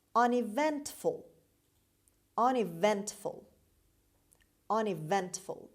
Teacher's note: The stress is on the third syllable on V sound. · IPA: /ˌʌnɪˈventfəl/